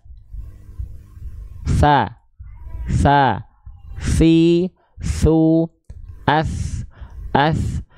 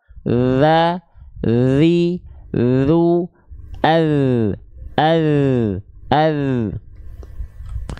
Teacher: Huruf sa, huruf zal ini dilafalkan dengan cara wadhu wadzalu wasalil ulya min tarafaihima. Huruf sa dan huruf zal itu dilafalkan dari ujung lidah kita, kita sentuhkan dengan ujung gigi seri atas kita.